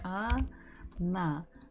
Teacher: So the word she, она, the stress falls on the last syllable. So the first letter O, is not stressed. So we must read it or pronounce it as A.